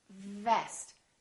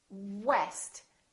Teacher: So V is just the lower lip touching the upper teeth. Vest. And W, west. We round our lips and the lower lip doesn't touch anywhere.